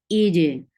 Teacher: For kasra, give E sound and apply qalqala on jim